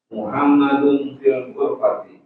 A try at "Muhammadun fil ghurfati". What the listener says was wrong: Ayo, sahih, bagus.